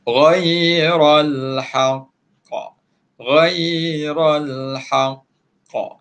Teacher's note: Bila kita berhenti dekat huruf qaf yang bila berhenti tu mati ada sabdu, kita jadikan dia bacaan qalqalah akbar. Qalqalah akbar ni kita kena lantunkan tinggi sikit.